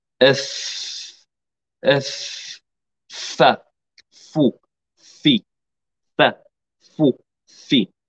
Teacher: مخرج الفاء من باطن الشفة السفلى مع أطراف الثنايا العليا. اف من هنا، اف اف فا فو في فا فو في.